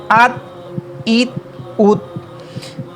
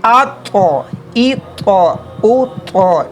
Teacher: ابھی یہ جو طا ہے یہ حروف قلقلہ میں بھی ہے اور حروف مستعلیہ میں سے بھی ہے۔ ایک تو اسے ہم لوگ موٹا تھک ریڈ کریں گے، دوسرا اس میں قلقلہ بھی کریں گے